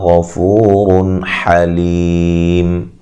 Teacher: را کو موٹا اور نون تنوین کا اظہار غنہ نہیں کریں گے